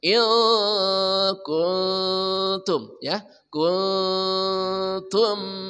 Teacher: nun mati bertemu kaf ujung lidah jangan dinaikkan lurus ke depan disertai dengung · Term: ikhfa, Ikhfa